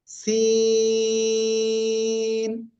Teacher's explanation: এই অক্ষরটা সিন চার আলিফ টানে উচ্চারণ করব